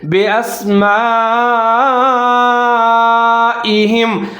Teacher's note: ہا اور میم کو ملا کے پڑھیں گے، اس ہا کو موٹا پڑھنا ہے